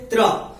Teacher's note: पहले दंत और फिर मूर्धा, दांत जो है एक दूसरे को टच करके छूटते हैं और जीभ जाकर के मूर्धा को टच करती है। इस वजह से ये त्रा जो है दंत मूर्धा हो जाता है।